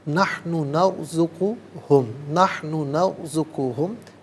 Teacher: نرزقو میں را ساکن ما قبل نون پر زبر ہے تو را ساکن کو پر کر کے پڑھا جائے گا